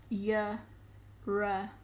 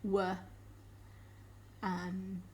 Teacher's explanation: An approximate, it's a partial blockage, but they don't actually touch.